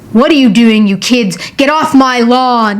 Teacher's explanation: a gruff voice is a low deep voice that sounds very harsh and very unfriendly